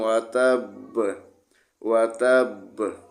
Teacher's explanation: وقف میں با کو ساکن پڑھیں گے تو با پر قلقلہ کریں گے